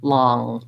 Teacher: in the ipa it's one symbol because it is one sound it's not an n and a g but rather i lift the back of my tongue · I lift the back of my tongue to do the ng sound